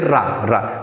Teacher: रा बोलते समय क्या है, हमारी जीभ ऊपर मूर्धा से टच करके लुढ़क कर जाती है, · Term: लुंठित वर्ण